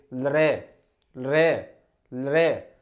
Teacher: जब भी आप लृ का प्रयोग करोगे तो आपकी जिह्वा आपके दांत से टकराती है, उसके बिना आप इसका उच्चारण नहीं कर सकते। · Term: दंतव्य